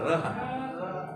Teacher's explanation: र बोलने से क्या हो रहा है, जीभ का नोक आगे वाला भाग ऊपर उठ करके घूम रहा है, मतलब मुड़ रहा है, इसीलिए इसको कहते हैं लुंठित, माने लुढ़कना।